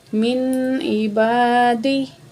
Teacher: من عبادی، تو یہاں الف خالی ہے، ما قبل زبر ہے، الف مد ہے، 2 سیکنڈ الف کو کھینچ کے پڑھیں گے